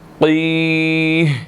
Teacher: قوف یہاں پر موٹا ادا ہوگا اور اس کے بعد یا مدہ ہے تو اس کو ہم نے 1 سیکنڈ لمبا کرنا ہے، ٹھیک ہے. اور ہا جو ہے، یہ جو ہا ہے یہ سائلنٹ ہو جائے گا، اس کی زیر ختم ہو جائے گی تو اینڈ پر ساؤنڈ آئے گی قی، ٹھیک ہے جی.